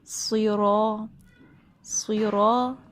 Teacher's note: زبان کا پیچھے کا حصہ یعنی جڑ جو ہے ہم زبان کی وہ اوپر اٹھائیں گے، آگے کا اس میں ایسا سچ کوئی کام نہیں ہے، تھوڑا سا ہوتا ہے آگے کا کام، لیکن زیادہ پیچھے سے بھری آواز نکالتے ہیں، سیرو سیرو، ٹھیک ہے۔